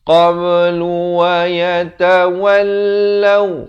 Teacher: Qablu, qab ada lantunan qalqalah di sini.